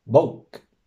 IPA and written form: boʊːk (BOK)